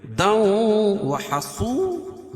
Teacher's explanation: صاد کو پر پڑھیں گے کیوں؟ صاد حروف مستعلیہ میں سے ہے